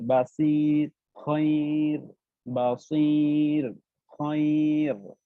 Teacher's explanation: তো রুলসটা হলো এখানে যদি এরকম থাকে, ইয়া থাকে এবং তার উপর সাকিন থাকে, তাহলে আমার রটা পাতলা হয়ে যাবে, লাইক বাসির। এখানে আমি বাসির মোটা করতে পারবো না, এখানে পাতলা করে পড়তে হবে